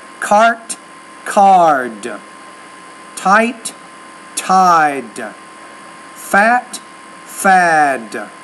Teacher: when the t's at the end of the word because the t is a voiceless consonant the vowel which precedes it should be shorter